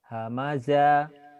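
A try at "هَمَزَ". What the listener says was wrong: Nggak ada yang panjang.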